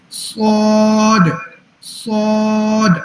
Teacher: سواد میں سی ٹی بھی ہے, اس کو موٹا بھی پڑھنا ہے, ٹھیک ہے. تو ہم نے زبان کو جو ہے نا وہ تھوڑی سختی دینی ہے.